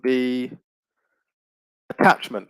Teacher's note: the stress remains on the second syllable